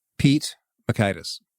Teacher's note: you aspirated the T on the end of Pete you put the T that little pop of air in it